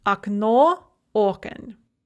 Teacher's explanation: notice the stress shift that is very common for bisyllabic nouns